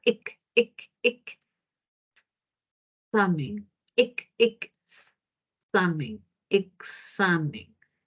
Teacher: se puede observar que remite a dos sonidos, ¿no? Remite a dos sonidos, que viene a ser la K y la S.